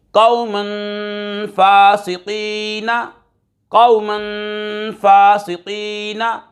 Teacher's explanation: دو زبر کی تنوین کے بعد فا حروف اخفا میں سے آ رہا ہے، غنہ کر کے پڑھیں گے